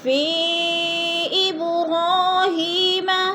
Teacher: حروف مدہ کے بعد حمزہ دوسرے کلمے میں ہے تو ادھر مد منفصل ہو رہی ہے، اس کو 4 حرکات کے برابر لمبا کر کے پڑھیں گے